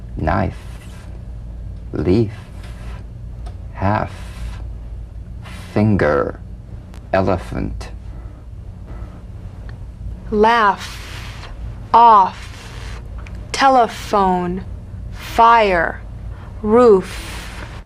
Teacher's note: the unvoiced fricative labiodental upper teeth to lower lip just like the V now feel the V then turn off the voice and continue